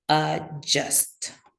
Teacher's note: So two schwas there and the just j sound, right?